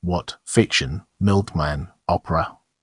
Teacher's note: In the English dialects exhibiting pre-glottalization, the consonants in question are usually glottalized in the coda position, what, fiction, milkman, opera.